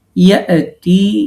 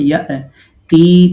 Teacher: হামজা সাকিন দিয়ে ধাক্কা দিয়ে উচ্চারণ করতে হবে